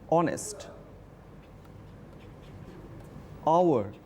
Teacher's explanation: আমরা এইচ দিয়ে শুরু করছি কিন্তু উচ্চারণটার প্রোনাউন্সিয়েশনটা স্টার্ট হচ্ছে কিন্তু ও দিয়ে, অনেস্ট। আওয়ার, এইচ দিয়ে ওয়ার্ডটা শুরু হচ্ছে কিন্তু প্রোনাউন্সিয়েশনটা হচ্ছে ও দিয়ে, আওয়ার। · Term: সাইলেন্ট